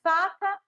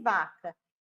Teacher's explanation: eu tenho um som que não tem o papel das cordas vocais, ou seja, minhas cordas vocais não vibram, é mais surdo